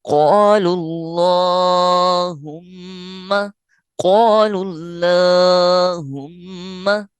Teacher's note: میم مشدد پر اور نون مشدد پر غنہ ہوگا، لہذا یہاں غنہ کریں گے۔ قال اللہم، قال اللہم، یہاں للہ نہیں پڑھیں گے، اللہم۔